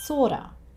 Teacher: So he says this as one long word. And he shortens of to just the schwa sound. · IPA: ə